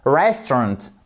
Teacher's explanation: vous voyez que vous avez une apostrophe ici qui signifie que c'est la première syllabe qui est accentué